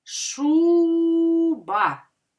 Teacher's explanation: Так наголошений перший склад